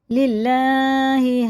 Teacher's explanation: لام زیر سے ہے تو باریک پڑھیں گے